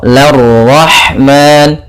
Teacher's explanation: Ro-nya di sini ra tafkhim karena dia berharakat fathah.